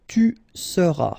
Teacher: tu seras, final S not pronounced